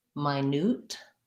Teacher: so my newt has second syllable stress and it has a clear oo for this letter u